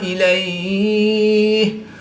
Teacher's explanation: یالین کے بعد ہا کی زیر کو وقف کی حالت میں ساکن کریں گے، تو یہاں پر مد لین عارض ہوگی، 2 سے 3 الف تک کھینچ کر پڑھیں گے